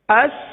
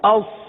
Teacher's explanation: सीन को बारीक पढ़ा जाता है और सौद को पुर पढ़ा जाता है।